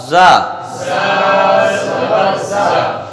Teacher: کنارہ زبان اور اوپر نیچے کے دونوں دانتوں کے بیچ میں جب ہم زبان کو رکھتے ہیں تو زا ادا ہوتی ہے